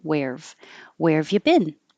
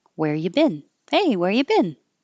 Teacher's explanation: just drop the V completely and change you to Yu